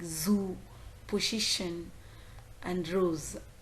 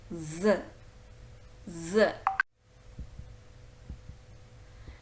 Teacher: it is a voiced alveolar we could easily see the vibration in the vocal cord chord the blade of the tongue just touches the teeth ridge